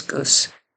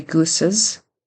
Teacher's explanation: he forgets the plural plural z sound at the end he just says Goose needs to be gooses and then with